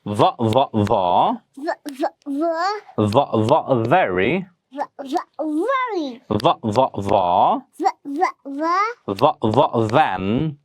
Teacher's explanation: দুই ঠোঁট একসঙ্গে করে না, উপরের দাঁত নিচের ঠোঁট দিয়ে ভ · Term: voiced consonant sound